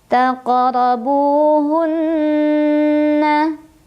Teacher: Ada gunnah musyaddadah karena ada nun yang bertasydid, cara membacanya didengungkan, ditahan kurang lebih 2 harokat.